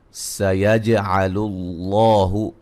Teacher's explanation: جیم پہ قلقلہ، یہ لام کو باریک، لفظ اللہ کو لام کو موٹا